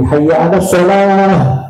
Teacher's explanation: Ada hak itu makhrajnya aqsal halqi, di pangkal tenggorokan.